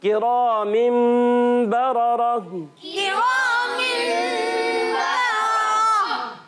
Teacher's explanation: इस दोनों रा को भी हमने मोटा करके पढ़ना है, पुर पढ़ना है